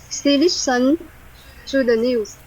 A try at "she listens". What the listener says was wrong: listen there's a sound Z at the end right